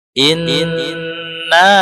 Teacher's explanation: gunnah secara garis besar yang ditahan 3 harokat dan kemudian masuk lewat rongga hidung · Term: gunnah asliyah